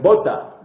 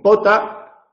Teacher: Si yo digo bota y digo pota, pues distinguimos una palabra de otra por la acción de las cuerdas vocales, que no vemos, pero percibimos